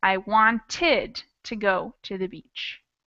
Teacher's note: we add a whole extra syllable and pronounce it id